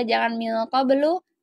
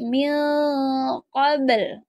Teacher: Nah, di sini ada huruf qalqalah, terus ini lamnya harus dibaca sukun juga ya, jangan min qablu tapi min qabl. Lamnya jadi sukun.